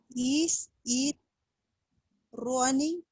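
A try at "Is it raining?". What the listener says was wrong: primera vez lo dijiste es como corriendo, running, pero es No se trata de no decir una R fuerte. En el inglés todas las R son suaves. decir que la lengua no toca la parte de arriba de la boca, se deja como una U.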